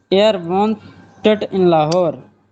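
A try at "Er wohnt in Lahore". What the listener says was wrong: मेरे भाई वांटेड नहीं वांट उसका टी तो है ही नहीं या वांट।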